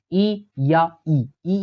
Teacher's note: देखिएगा इसमें सबसे पहला है तालव्य। तालव्य यानी जीभ तालु का स्पर्श करेगी।